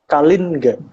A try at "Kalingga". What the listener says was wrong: Jadi dipisah. Ya, Kalin sama Ga-nya dipisah. Karena itu pengucapan dalam Sanskerta harusnya seperti itu. Cuman di zaman Jawa yang sekarang itu, huruf N di belakang itu kadang-kadang menjadi NG. Jadi jadi kadang-kadang diucapkan menjadi Kalingga. Tapi sebenarnya bukan.